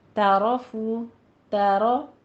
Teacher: تعرفو، تارو، تا باریک ہی رہے گا، تورو نہیں کہنا ہے، تو نہیں بنانا، تا باریک رکھیے، رو کو پر کرنا ہے